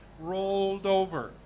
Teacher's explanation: d goes to the next syllable